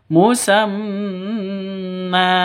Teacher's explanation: mim tasydid berdiri sendiri maka disebut dengan ghunnah musyaddadah dengungnya dua ketukan